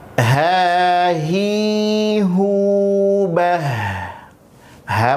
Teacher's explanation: ha memiliki sifat hamz dan rakhawah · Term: huruf ha